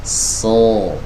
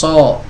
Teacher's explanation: suara vokal yang mirip dengan o itu, ya, itu sebenarnya bukan dari 2 bibir yang dimajukan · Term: huruf shad